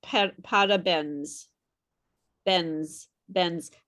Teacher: I don't hear the final N at all. I don't hear the final N. I hear parabéns, bens.